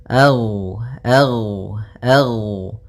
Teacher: Gin termasuk salah satu sifat huruf yang dia adalah sifat rakhawah yang di mana suaranya mengalir